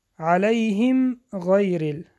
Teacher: اظهار شفوی است که میم سکون روشن خوانده می شود. غیر حرف را با کسره باریک خوانده می شود.